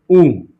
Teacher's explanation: अगर आप ऊ बोलिएगा, ऊ ऊ बोलोगे तो मुंह की आकृति गोल हो जाएगी यानी वृत्ताकार हो जाएगी